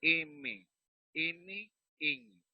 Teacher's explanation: El sonido se produce dentro de la cavidad nasal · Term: los nasales